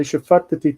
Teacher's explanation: Because there are two T's together, and it's the same sound. And so to not let the first T disappear, the tet, to not let it disappear, you pronounce the shva, even though technically it's a silent shva